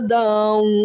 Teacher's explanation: یہاں پر ادغام غنہ کریں گے کیونکہ 2 زبر کی تنوین کے آگے حروف یرملون میں واو ہے، تو واو کے اندر ادغام کریں گے اور غنہ کریں گے، اور غنے کی مقدار 1 الف ہے. 1 الف کی مقدار آواز کو ناک کے اندر چھپا کر ادا کریں گے